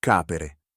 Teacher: The third conjugation infinitive ends in a short E.